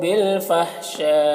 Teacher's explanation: یہاں پر مد لازم اور مد متصل دونوں کو 3 سے 4 الف برابر کھینچ کر پڑھتے ہیں